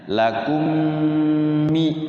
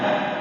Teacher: Mim mati ketemu mim. Idgham mimi ya. Mimnya masuk ke mim didengungkan. Kemudian ada nun sukun ketemu mim namanya beda ini walaupun bunyinya beda.